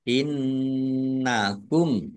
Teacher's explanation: ditahan biar tampak dengungannya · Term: gunah